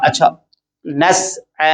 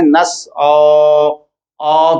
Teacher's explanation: आइन की आवाज बारीक रहेगी और जब हम मुंह भर देंगे तो वो उसकी आवाज मोटी हो जाती है। अगर हम कहें नस औ कहने से मुंह भर जाएगा, उसकी जो असल आवाज है वो गलत हो जाएगी।